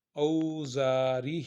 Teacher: او حروف لین ہے اس لیے اس کو نرمی کے ساتھ ادا کرنا، او ہونٹوں کو گول کر کر